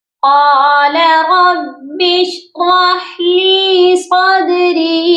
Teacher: قاف کو موٹا کر کے پڑھیں گے، اور ربی، را کو بھی ہم نے موٹا کرنا ہے، با کو شین کے ساتھ ملا کر پڑھنا ہے۔